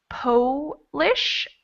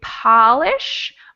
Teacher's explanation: when i say polish my mouth becomes kind of a small o and when i say polish my mouth is much more open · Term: o sound